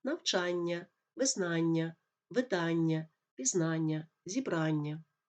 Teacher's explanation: іменники середнього роду на Аня у яких більше двох складів мають наголоси як правило на суфікси